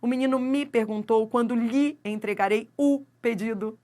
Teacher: Esse me vira mi. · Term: monossílabo átono